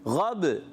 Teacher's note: غین کو موٹا رکھنا ہے اور با میں قلقلہ بھی کرنا ہے